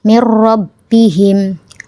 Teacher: atau tanwin bertemu dengan huruf lam atau ro cara membacanya yaitu meleburkan nun sukun ke huruf berikutnya tanpa gunah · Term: idgham bila ghunah